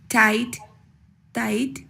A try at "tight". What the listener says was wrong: No, I think that T, sometimes when the T is in the beginning of the word, maybe before certain types of vowels, based on how you do it in Spanish, you're not always pronouncing the T with enough air. So tight, tide.